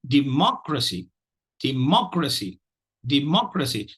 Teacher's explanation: we've again seen a 4-syllable word which carries the primary stress on the 2nd syllable